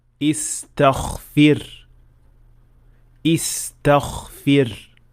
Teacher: The last mistake of ghain is mixing its sound with kha. When ghain is surrounded by voiceless sounds, some learners tend to make ghain also voiceless. The result is that it will sound more like kha rather than ghain, like in this word.